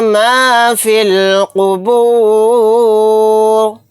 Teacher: قاف کو موٹا یعنی پر پڑھیں گے، را کو ساکن بنا کر پڑھیں گے آیت کرنے کی صورت میں۔ را ساکن ہوگا تو را کو یہاں پر موٹا بھی پڑھیں گے کیونکہ را ساکنہ سے پہلے پیش آ رہا ہے · فا کو ڈائریکٹ لام ساکن کے ساتھ ملا دیں گے، یا اور الف نہیں پڑھا جائے گا۔